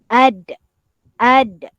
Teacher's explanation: Jadi ujung lidah ditekan ke gusi bahagian atas. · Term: huruf Dal